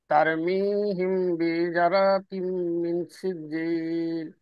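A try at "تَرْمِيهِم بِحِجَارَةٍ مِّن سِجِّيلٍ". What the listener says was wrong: এই যে এখানে কিন্তু একটা মাদা ছিল স্যার, এই যে বিহি যা হবে, যা যা, এখানেও একটা মাদা ছিল,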